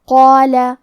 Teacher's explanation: کلمت قالہ میں قاف ہے اور اس کے بعد مد الف ہے، کیونکہ مد الف اپنے پیچھے والے حرف کا حکم لیتا ہے تفخیم میں اور ترقیق میں، تو ہم مد الف کو تفخیم سے ادا کریں گے